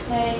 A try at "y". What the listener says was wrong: I. You have 2 of them in your face. I. Not hey, hey, hey. I. Do it again.